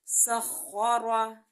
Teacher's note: خواہ کو جو ہے ہم موٹا پڑھیں گے اور را کو بھی موٹا پڑھیں گے